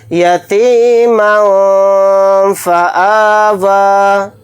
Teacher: मीम के ऊपर तनवीन है, तनवीन के बाद फ़ा आ रहा है। फ़ा हुरूफ़ इख्फ़ा में से एक हर्फ है, तो यहाँ पर इख्फ़ा करके पढ़ेंगे। इख्फ़ा इस तरह से करेंगे, यतीमन फ़आवा।